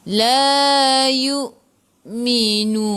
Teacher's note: La, 2 harakat ada alif mad asli. Yu, hamzah baris sukun kena baca dengan putus.